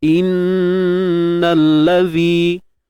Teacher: Nun yang bersabdu wajib kita dengungkan dengan kadar 2 harakat. Dengung yang sempurna nah. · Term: gunnah musyaddadah